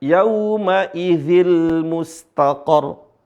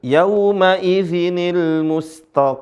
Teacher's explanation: perpindahan harakat dari yang tadinya sukun menjadi berharakat itu naqal